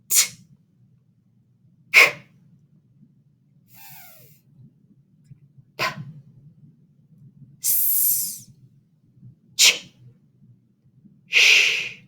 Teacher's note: you're going to see how they're all unvoiced. You don't use your voice.